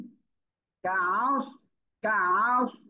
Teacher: আইনটা গলাটা চেপে পড়বেন।